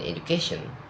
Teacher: In stress attracting suffixes move the move the stress to the syllable before the suffix. In education the stress moves closer to the suffix.